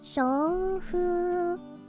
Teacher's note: shou, fu, you need them both to be long in order for it to mean wind in the pines. But if you make the first one longer than the second one, it means prostitute. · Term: phonemic vowel length